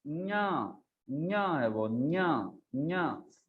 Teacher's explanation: ये जिह्वा का बीच वाला भाग अंत में लगता है तालु को, न्या, और वो आता है थोड़ा नासिका से और थोड़ा तालु को स्पर्श करते हुए आता है।